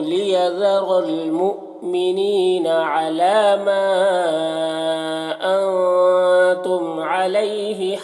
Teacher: مؤمنین یہاں پر حمزہ ساکنہ جھٹکا لگے گا۔ نی یہاں پر یا مدہ ہے، ایک الف کے برابر کھینچ کر پڑھیں گے۔